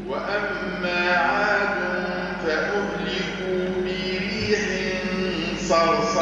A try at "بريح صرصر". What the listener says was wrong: لا مش بريح صا خاطر بعدها الصاد نفخم الغنة بريح صا.